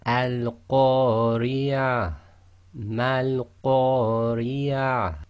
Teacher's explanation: you would read that ta marbuta as if it's a ha sakin